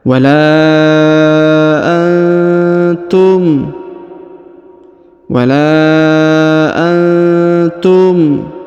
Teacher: huruf lam dibaca panjang lima harakat karena di atasnya terdapat tanda bacaan panjang